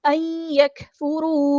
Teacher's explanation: بعد یا آیا ہے تو ادغام ہوگا، ان نہیں پڑھنا، این، نون ساکن کی آواز کو یا کی آواز میں یہاں پہ مدغم کر دیں گے